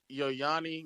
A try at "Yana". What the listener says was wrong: Yana? It says Yana, nigga.